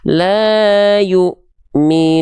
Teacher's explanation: Damah ketemu wau sukun itu dua harakat.